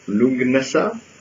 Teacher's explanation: tu as choisi de pas prononcer le DH à la fin